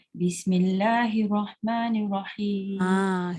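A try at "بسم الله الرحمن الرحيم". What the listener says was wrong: Ada basmalah ada satu ra sabdu. Sorry, ada dua ra sabdu. Jadi perlu ditekankan pada huruf tu. Dia tak boleh Bismillahirrahmanirrahim. Dia macam tak lekat. Dia longgar.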